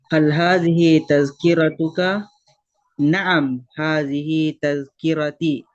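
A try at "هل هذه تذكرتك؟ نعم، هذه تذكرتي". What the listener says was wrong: Mumtaz.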